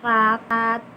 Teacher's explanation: R getaran lidah dengan langit-langit keras gitu loh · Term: fonem R